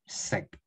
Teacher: the ninth tone is the shorter version of the sixth tone